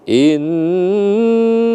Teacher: Nun bertasdid wajibal ghunah atau ghunah musyaddadah. Jadi kita tekan selama dua harakat.